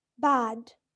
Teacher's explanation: Notice here that A is a low vowel and it is considered the lowest of the front vowels.